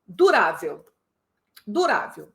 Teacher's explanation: já constatamos a posição da tônica durável é paroxítona